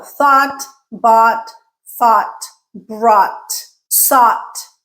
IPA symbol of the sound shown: ɔː